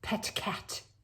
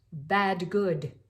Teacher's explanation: notice you're using all the unvoiced and then the voiced plosives. The unvoiced, pet cat, and then the voiced, bad, good.